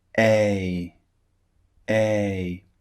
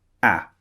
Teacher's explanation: to notice with these two sounds is the difference in length a is the first sound it's quite long a a and the second sound ah is very very short it comes out in a very short burst ah